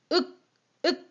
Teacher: 자, 이렇듯 훈민정음에서는 한글의 자음 기본자의 이름을 뭐라고 불렀었냐면 그 기역 같은 경우는 윽 하는 순간 이 혀뿌리가 목구멍을 막으면서 거의 어금니 쪽에 혀뿌리가 달라붙어요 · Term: 어금니 소리